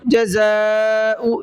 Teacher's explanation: بڑا مد ہے، 4 سے 5 الف کی برابر کھینچ کر کے پڑھنا ہے